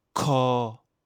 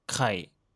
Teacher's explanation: prends le c de café ou comment et exagère-le. Expulse une forte bouffée d'air en le prononçant. Mets ta main devant ta bouche, tu dois sentir l'air. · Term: version aspirée